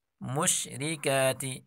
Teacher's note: اس را کے نیچے زیر ہے تو اس را کو ہم باریک پڑھیں گے